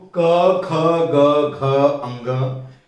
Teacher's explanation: तो क ख ग घ अंग जब आप बोलेंगे तो आपको लगेगा कि आवाज गले से आ रही है, तो इसका उच्चारण स्थान कंठ हो गया।